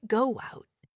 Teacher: even between two vowel sounds, a tiny I or W sound is subtly inserted to smooth the transition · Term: vowel-vowel linking